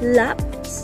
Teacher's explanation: Ang paraan ng artikulasyon sa letrang L ay paggilid o liquid lateral. Ang punto naman ng artikulasyon, ito ay panggilagid o alveolar at ito ay may tunog.